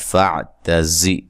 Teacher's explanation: فاعتزی تا کو باریک زا کو زور سے ادا کرنا ہے, سیٹی سے ادا کرنا ہے